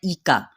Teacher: ای کا حمزہ کو سختی سے ادا کرنا ہے لیکن باریک بھی کرنا ہے